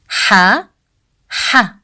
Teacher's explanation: The sound of ha comes from the middle part of throat. We don't say it as the English sound ha, as in house.